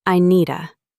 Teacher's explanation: in fast casual speech, I need to may sound closer to I needa.